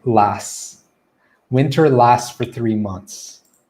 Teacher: that t sound gets cut and it just sounds like lass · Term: cutting the t sound